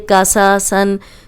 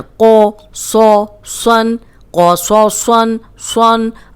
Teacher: लेकिन ये तीनों मोटे हैं, कौफ मोटा, सौद मोटा, सौद मोटा, तीनों मोटे पढ़ने हैं।